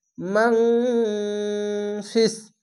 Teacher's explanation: এখানে ইখফা গুন্না বাংলা অনস্কার মত হবে